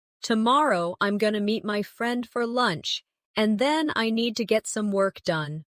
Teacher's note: Stress tomorrow meet friend lunch and work. The other words should be softer and faster.